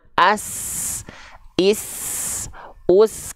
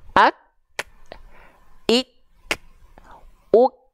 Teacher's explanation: Jadi yang keluar itu tertahan dulu, baru keluar percikan nafasnya.